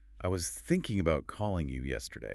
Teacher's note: Thinking, calling, yesterday are the stressed content words.